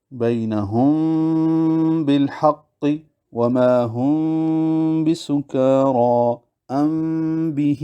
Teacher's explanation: ان میں میم کے ادا کرتے وقت ہونٹوں کے خشکی والے حصہ کو ایسی نرمی کے ساتھ ملائیں گے کہ اس ضعیف اعتماد کے سبب میم کمزور ہو کر اس کا کچھ حصہ غائب سا ہو جائے گا اور صفت غنہ بھی بقدر ایک الف خیشوم سے ادا ہو۔ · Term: اخفاء شفوی